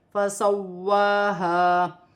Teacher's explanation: واو مشدد ہے، اسے جماؤں کے ساتھ پڑھا جائے گا اور ایک الف کی مقدار کھینچ کر پڑھا جائے گا